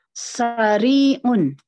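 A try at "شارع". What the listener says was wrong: Kalau jalan besar berbeda lagi ya. Dia pakai shin. Shinnya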